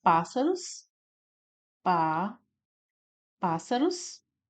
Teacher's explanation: Nós temos aqui o pás, né, como sílaba tônica, também uma proparoxítona.